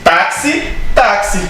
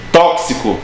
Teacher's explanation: Porque o X tem som de KS.